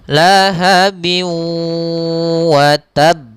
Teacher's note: Karena ketemu dengan waw, tanwinnya hilang sehingga masuk ke huruf waw. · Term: idgham bi gunnah